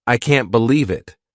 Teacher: notice how their voice goes up to show surprise.